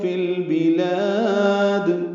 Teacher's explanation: لام ساکن پہ اظہار قمری ہے، لام کو لمبا کرنا اور دال ساکن پہ قلقلہ ہے